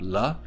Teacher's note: the L sound, la, a lateral liquid or glide